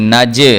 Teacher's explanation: جیم جو ہے یہ حروف قلقلہ میں سے آ گیا، اس لیے اس کو جنبش دے کے ابھار کے پڑھیں گے